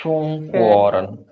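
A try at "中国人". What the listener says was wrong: rennya naik.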